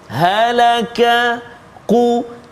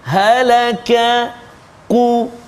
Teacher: Jadi kena kenal pasti tepat keluar dia. Qaf dekat mana? Pangkal lidah, kan, belakang lidah dekat dengan anak tekak. Kaf depan dia.